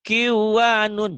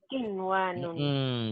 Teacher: karena ketemunya satu kata, satu kerangkaian, satu kalimat, maka tidak dibaca idgham, harus dibaca idhar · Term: idhar mutlak